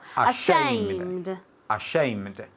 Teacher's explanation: the accent goes in the second syllable